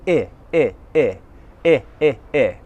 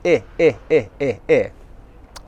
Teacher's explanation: Is my mouth open or closed? It's almost completely closed. I. My lips are stretched wide. I. The vowel sound is coming from the front of my mouth. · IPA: /ɪ/